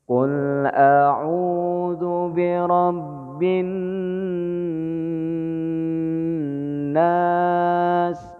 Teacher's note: Gunnahnya itu bin, tahan ya, dengung. Bin nas. Kalau nas itu ada hukum lain gitu. · Yang saya ingin kemukakan adalah masalah gunnah. Jadi dengung di bin nas.